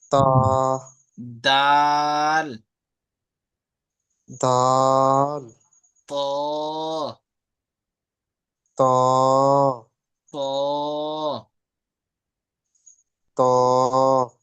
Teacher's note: জিহ্বার আগা এবং সামনের উপরের দাঁতের গোড়ার সাথে লেগে উচ্চারণ হয় তা, দাল, ত।